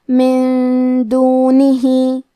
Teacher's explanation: دال حروف الاخفاء میں سے ہے، تو ہم یہ حکم کو غنہ کے ساتھ ادا کریں گے · کلمت دونہ کے آخری میں ہا کے نیچے کھڑی زیر ہے، ہم مد صلہ صغرا کو ظاہر کریں گے